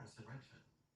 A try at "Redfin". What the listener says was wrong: But you're saying Rentfin, it's Redfin. Okay, so this sound you're making with your mouth, is it red like the color or rent like an apartment? Okay, so say Redfin.